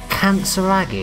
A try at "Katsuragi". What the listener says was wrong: Almost. Katsuragi. Don't, just eliminate the N.